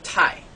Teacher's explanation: the fourth tone in Mandarin which is a falling tone